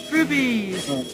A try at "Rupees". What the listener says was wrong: Rupees! They're not rupees, they pronounce rupees. There's no B in there. R-U-P-E-E. Rupees. Not rupees.